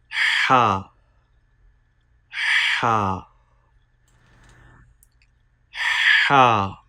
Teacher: Ha is pronounced from the middle part of the throat. Please read Ha with clear and soft sound.